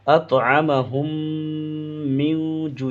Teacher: الذی اطعمہم، بڑی تا نکالیں گے، اطعمہم، اس میم ہا کو اس میم میں ملا کر مشدد کر دیں گے، گنہ کر دیں گے، ناک میں آواز چھپا لیں گے۔